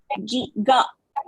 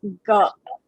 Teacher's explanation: please remember this is a vibration sound that is a uh voiced sound